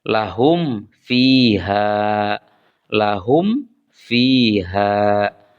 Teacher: Cara membacanya, huruf mim mati dibaca jelas. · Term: izhar syafawi